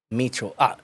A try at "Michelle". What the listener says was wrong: Michelle. You are reading Michelle as Micho.